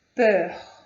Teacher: esse EUR é uma pronúncia fechada, peur